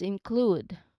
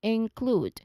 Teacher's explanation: So you move from the N sound, which is the last sound for the first syllable, into the KL blend, okay, which is our starting sound in the second syllable. So it's important to make that K and L blend smoothly without an extra vowel sound between them